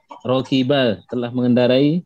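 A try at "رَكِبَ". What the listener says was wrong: Sahih.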